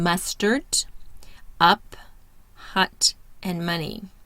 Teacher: The tongue is mid-central, laxed, mouth open slightly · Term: the short U sound